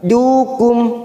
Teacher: mim sukun bertemu ain idhar safawi, kita baca jelas tanpa mendengung